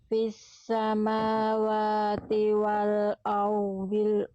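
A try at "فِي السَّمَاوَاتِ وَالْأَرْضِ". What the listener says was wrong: Ro-nya kurang jelas, dotnya kurang tebal. Bisa kok, bisa pelan-pelan, jangan cepat-cepat. Fis samawati wal ardil ghaiba.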